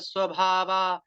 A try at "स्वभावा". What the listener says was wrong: स्वभाव स्वभाव कहाँ है? आ की मात्रा कहाँ है? ये आ लगाते हैं बेटा, हर जगह इसको उच्चारण संस्कृत में ये बड़ा कृष्ण और कृष्णा में पूरा अंतर हो जाएगा।